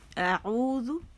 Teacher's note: عین ادا کریں گے وسط الحلق سے